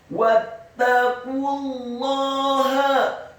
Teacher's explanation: Seharusnya dibaca 2 harokat karena setelahnya ada wawu sukun, namun karena setelah huruf wawu sukun ada huruf lam yang tasydid pada kata Allah, maka huruf qaf yang dhammahnya cukup dibaca 1 harokat saja. Wattaqullaha.